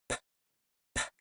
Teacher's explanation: We can't stretch out p like we did with s or ah.